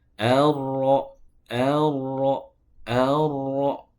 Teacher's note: sifat takrir yang dimiliki oleh ro itu tidak tebal atau ditipiskan atau dilemahkan sehingga pengulangannya tidak terlalu banyak.